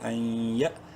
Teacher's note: نون ساکن کے بعد یا یرملون میں سے ہے، ادغام مع الغنہ ہوگا